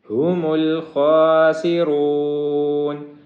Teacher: ہا جو ہے یہ سینے والی ہا ہے، حلق والی ہا نہیں ہے، اور خوا کو موٹا پڑھیں گے، را کو بھی موٹا کریں گے۔